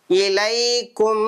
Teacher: நம்ம கொஞ்ச நேரம் மூக்குல வச்சு ஓதணும் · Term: குன்னா